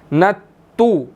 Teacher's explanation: اب نون جو ہے وہ تا کے ساتھ مل رہا ہے، تا مشدد ہے، نون نے اس کے ساتھ ملنا ہے